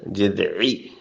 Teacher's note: عین پہ حلق پہ زور دیں